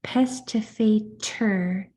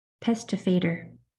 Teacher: because the T and it's okay either one is fine because that t can change to more of a just a stop sound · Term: spit T